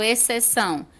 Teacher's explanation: quando eu falo exceção você não sente o som do x o x fica mudo mas ele tá ali a palavra se escreve com x 1